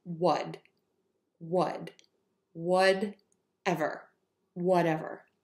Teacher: So the first syllable is going to be very short, would, and the second syllable, or the second word rather, will be a little bit longer.